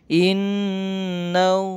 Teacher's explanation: Inna dibaca gunna ya, nun tasdid dan mim tasdid